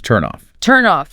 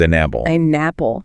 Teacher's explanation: that final consonant sound just sort of jumps over and attaches itself to the beginning of the next word. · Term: consonant to vowel linking